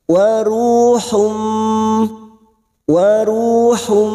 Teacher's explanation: siap masuk dan mendengung masuk pada huruf berikutnya yaitu huruf mim dan mendengung selama dua atau tiga harakat Hum nun sukun bertemu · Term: idgam bunah